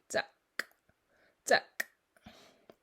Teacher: So you're taking a regular K and just popping it out a little bit harder than you would in English. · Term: hard K